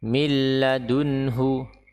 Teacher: huruf nun tidak perlu kita pikirkan karena apa setelahnya adalah huruf lam yang bertanda tasydid